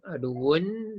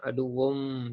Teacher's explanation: Tanwin asalnya bunyi nun mati, aduun dengan nun tukar kepada aduwum, tutup mulut. Dengung 2 harakat di situ. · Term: idgham ma'al gunnah